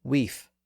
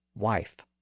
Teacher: the E sound gradually evolved into the I sound